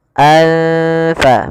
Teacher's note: tanwin bertemu dengan salah satu huruf Ikfa yaitu huruf Fa maka cara membacanya samarkan tanwinnya kepada huruf Fa anfa makhraj daripada Fa adalah gigi atas menempel dengan bibir bawah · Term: Ikhfa